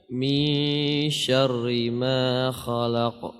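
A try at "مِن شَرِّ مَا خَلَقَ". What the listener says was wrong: Ya, pertama ra-nya tipiskan, syarri. Seperti tadi, min syarri. Jadi ra kasrah itu tipis. Kemudian khalaq, huruf lamnya istifal tipis. Khala dibuka, khalaq. Min syarri ma khalaq.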